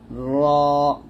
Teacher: র জিহ্বার আগার উল্টা পিঠ তার বরাবর উপর তালুর সঙ্গে লাগবে